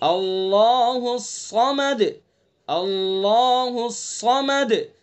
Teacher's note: दाल के अंदर कलकला करेंगे